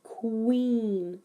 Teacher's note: making sure the w sound is very clear with the lips staying rounded the whole time